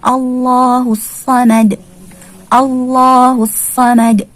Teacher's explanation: Di sini ada lafzul jalalah dibaca tebal atau tafkhim. Kenapa? Ya, karena dia berada pada susunan kalimat, di awal susunan kalimat, atau di sini kita sebut berada di awal ayat.